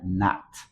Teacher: Esta O tiene como una caída de A